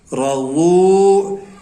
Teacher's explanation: را زبر را، ضاد واو پیش زو، رضو. ایک تو را کے اوپر زبر ہے، اس کو ہم پر پڑھیں گے، موٹا پڑھیں گے. اور دوسرا یہ ضا ہے، ضاد ہے، وہ یہ واو جو ہے یہ حروف مدہ میں سے ہے.